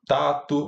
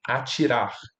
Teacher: Já o que acontece com t é diferente, porque quando a gente tem um t antes de i, ele vai se realizar como ch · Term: tchan